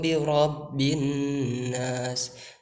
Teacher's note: Nah, itu birabbin nas. Di sana alif lamnya tidak dibaca tetapi dimasukkan ke huruf nun. Jadi di sana terdapat ada hukum idgham. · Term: alif lam syamsiah